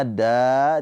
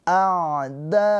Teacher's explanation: Mad wajib muttasil. Panjangnya da dibaca panjang boleh empat atau lima harakat.